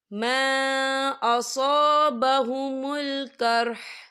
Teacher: اور آگے دیکھیں قرح، یہاں پہ آپ کو چھوٹی سی توئی لکھی نظر آ رہی ہے، تو یہ پھر مطلق کی علامت ہے، تو یہاں پہ ٹھہرنا بہتر ہے۔ وقف کی صورت میں ہا جو ہے ساکن ہو جائے گا